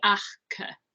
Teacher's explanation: It sounds like achke, and we're measuring pre-aspiration, which is the bit in the middle of it.